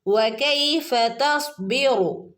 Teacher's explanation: വകൈഫ വാവിൻ്റെ ഉച്ചാരണം എങ്ങനെയാണ്? ചുണ്ടുവട്ടത്തിലാക്കിയിട്ട് വേണം വാവ് ഉച്ചരിക്കാൻ.